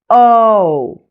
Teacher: Notice how it glides between an O and a U sound. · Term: long O